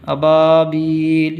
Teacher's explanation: تو یہ ایک تو با کو کھینچنا ہے، کیونکہ حروف مدہ جو 3 ہیں، الف واو یا میں سے الف آیا ہے اس میں، تو اس کو کھینچیں گے، با کو کھینچیں گے، ابا، اور با کو بھی کھینچیں گے، دوسرا والا با کو بھی، ابابیل۔